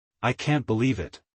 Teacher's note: excitement with falling intonation